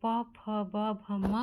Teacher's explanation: प फ ब भ म का जो उच्चारण स्थान होता है वो होता है ओष्ठ। ओष्ठ से म का उच्चारण स्थान होता है।